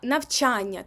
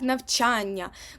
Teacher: у вас подвоєння як ми вимовляємо слово наприклад навчання так навчання ми просто ось це н вимовляємо довгим звуком